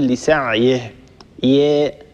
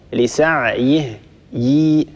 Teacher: لا بد أن نحقق كسرة الياء